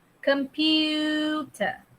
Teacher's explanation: kalau kamu dengar betul-betul sebutan kamu ada bunyi yah dengan u kat situ